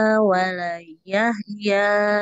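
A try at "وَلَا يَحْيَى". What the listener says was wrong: Nah, Ibu coba perhatikan lagi panjang pendeknya. Ini lamnya panjang, ya mu juga panjang. Dhamma bertemu sukun, fathah bertemu alif ya. Summa la yamutu fiha wa la yahya qad aflaha man tazakka. Jadi kalau susah ke panjang pendeknya ya bisa langsung terapkan pola yang tadi, Ibu ya.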